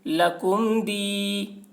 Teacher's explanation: میم ساکن کے بعد با اور میم کے علاوہ حرف دال ہے، اس وجہ سے میم کو ظاہر کر کے پڑھیں گے، اس کو اظہار شفوی کہتے ہیں۔